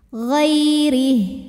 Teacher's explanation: ada huruf Lin sebab ada Ya Sukun didahului baris fathah maka dibacanya lembut atau lunak ghairih huruf d dibunyikan secara tarqik sebab rnya berbaris di bawah